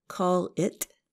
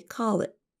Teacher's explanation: And our listeners should also notice that we don't really pronounce the letter T at the end of the phrase. Instead of saying call it, we say call it with a held T.